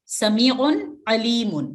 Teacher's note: یہاں بھی نون کلیئر پڑھا جائے گا, نون اس کی آواز ناک سے نہیں جاری ہوگی, غنہ نہیں کرنا